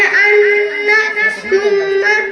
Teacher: غنہ کی مقدار ایک الف کے برابر ہے